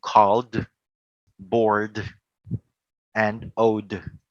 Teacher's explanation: Every time you are going to talk about a verb that ends with a voice consonant, you can sound it as a D sound.